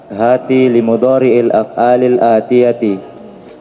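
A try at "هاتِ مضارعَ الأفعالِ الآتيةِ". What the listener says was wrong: Udah pakai lam itu. Buang lamnya itu. Hati mudhari'al af'alil atiyat. Nggak ada lamnya. Ulang hati mudhari al-af'alil atiyati.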